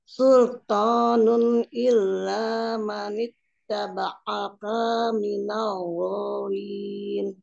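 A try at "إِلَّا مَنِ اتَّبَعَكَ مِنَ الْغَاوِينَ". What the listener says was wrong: Diperhatikan taba'aka kaknya tidak panjang ya, pendek. Illa manit taba'aka minal ghawin.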